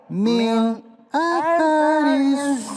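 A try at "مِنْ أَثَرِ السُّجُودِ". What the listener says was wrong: Min atharis. Jangan berdesis pemirsa. Min atharis. Sa. Sasi susa. Sasi susa.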